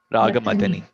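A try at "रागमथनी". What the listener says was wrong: No, it's a different word. Madana and Mathana. Raga Madani, not Madani. Second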